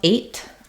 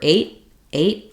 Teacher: number five um another thing to know about eight is that if I'm saying it by itself eight I will say this T sound with a burst of air but often we say this number eight eight or the the